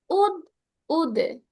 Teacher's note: কলকলা ও, হলে এই যে এক্সট্রা সাউন্ডটা আসছে, উদ, উদে। কলকলার জন্য এই যে উদে, উদে, এই যে এক্সট্রা সাউন্ডটা আসছে।